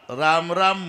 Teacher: राच्या वेळेला तोंड उघडायचंच आणि म च्या वेळेला बंदच करायचं